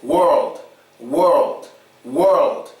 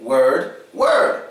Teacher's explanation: So you have the protrusion of the lips and the lifting of your tongue. In word, you don't have any of it.